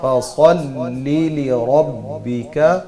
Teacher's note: صاد کو موٹا پڑھنا ہے، لام کو باریک